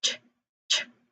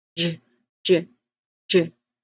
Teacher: And even with sounds like ch, ch, as in choke, and j, j, j, as in joke, you can feel that voicing kick in for the second one. There's vibration. It is voiced.